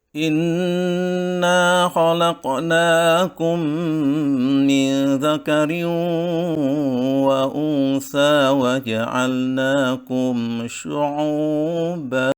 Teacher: tingkatan nada yang kedua, ada cirinya adalah diawali dengan tinggi dan diakhiri dengan datar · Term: tingkatan ada yang kedua